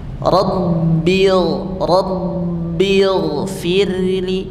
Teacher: Nah, bedanya dua bibir tadi itu ba-nya lebih kuat. Sebelum dipantulkan menempel kuat dulu karena dia asyiddah.